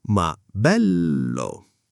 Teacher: Bello ha quella L doppia che vibra un attimo.